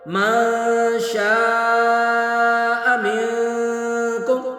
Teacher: شاء پر شین پر مد متصل 3 الف کھینچیں گے